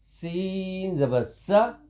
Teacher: سین کو دونوں دانتوں کے ساتھ ملاتے ہوئے سختی کے ساتھ پڑھیں گے